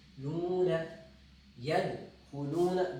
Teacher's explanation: بہت لمبا نہیں کرنا کیونکہ یہ حروف مد اصلی ہے، تو اس کو 2 الف کی مقدار، 2 الف کی مقدار.